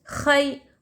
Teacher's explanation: یا ساکن سے پہلے حرکت زبر، یہاں پر یالین ہو رہا، یالین کو ہم جلدی پڑھیں گے، ذرا بھی نہیں کھینچیں گے